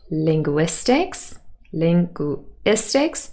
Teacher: Linguistics stressed on the third syllable would receive their main stress because it is new information now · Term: new information stress